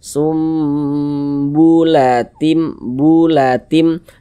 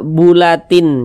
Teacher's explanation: tim masuk ke huruf mim melebur ke huruf mim kemudian kita dengungkan kita gunahkan jadi suaranya itu kita tahan kita